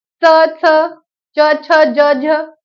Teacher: जेव्हा जिभेचं पात कठोर टाळूला लागून ज्या वर्णांचा उच्चार होतो त्याला आपण काय म्हणतो? त्याला आपण तालव्य वर्ण म्हणतो.